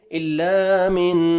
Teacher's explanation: نون ساکن کے بعد حروف حلقی, حروف اخفاء میں سے ضاد ہے, یہاں پہ آپ نے اخفاء کرنا ہے, نوز میں ساؤنڈ لے کے جائیں گے, الا من ضاد کو موٹا کر کے پڑھیں گے.